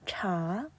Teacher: 오늘 3번은 자, CH 발음이 나왔어요. CH 발음은 치읓 소리인데 혀를 말아 올려서 버터처럼 느끼하게 발음한다고 했었죠. 여기다가 A는 아 소리가 나서 차, 끄듬은 올려갑니다.